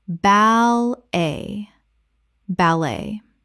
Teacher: Two syllables with the t completely silent.